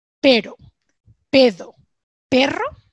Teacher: cuando yo pronuncio la R suave, la gente piensa que yo estoy pronunciando una D. Pero porque su sistema fonológico, su cerebro va a descodificar este sonido que yo he dicho.